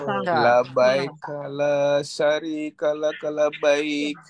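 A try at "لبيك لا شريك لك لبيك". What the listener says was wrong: Bukan sin, Pak. Bukan sin, tapi shin. Iya, pakai shin. Shwin. Seperti kita bilang SY. Tapi kalau menggunakan sin sa seperti biasa, itu artinya tidak ada pencuri bagimu.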